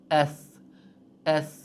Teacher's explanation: sa harfi mana shu holatda bo'ladi va uning mahraji chiqadigan o'rni tilimizdan uchi yuqori old tishlarning uchiga tegishligi bilan chiqadi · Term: chuchuk s